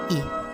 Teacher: Yang kedua, vokal I. Vokal I dilafalkan dengan cara menarik lidah ke depan dan ke atas, disertai dengan menghembuskan udara keluar, sedangkan mulut dilebarkan dan tidak membundar